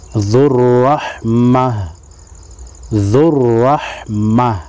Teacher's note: یہاں پر وقف مطلق ہے، وقف مطلق کی علامت ہے، تو یہاں پر جب ہم وقف کریں گے تو وقف کی صورت میں گول تا کو ہا پڑھیں گے